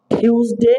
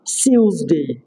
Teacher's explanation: টি এর পরে ইউ থাকলে সেটা চ উচ্চারণও করতে পারেন, চ উচ্চারণ ম্যাক্সিমাম ক্ষেত্রে চ উচ্চারণ হয়।